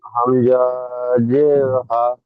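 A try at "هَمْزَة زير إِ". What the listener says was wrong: হামজা হামজা এখানে টান দিচ্ছেন কেন? এই হরফে টান নেই। হামজা জের ই, হামজা জের ই, বা জের বি,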